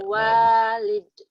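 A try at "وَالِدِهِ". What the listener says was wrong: Awalidih, ada haknya ini mah. Awalidih. Ada hakna. Awalidih. Awalidih.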